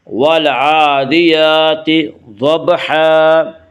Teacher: ضاد کو پر پڑھیں گے، ضاد حروف مستعلیہ میں سے ہے۔ حروف مستعلیہ 7 ہیں جن کا مجموعہ خص ضغط قز ہے، یعنی خا صاد ضاد غین طا قاف ظا، یہ 7 حروف ہمیشہ ہر حال میں پر پڑے جاتے ہیں۔ · کھڑا زبر کو ایک الف کے برابر کھینچ کر پڑھیں گے